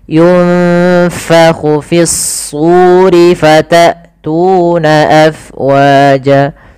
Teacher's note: Kemudian pada lafal fa, alirkan nafasnya karena fa itu harus ada angin yang kita keluarkan karena dia sifatnya hams, mengalirnya nafas.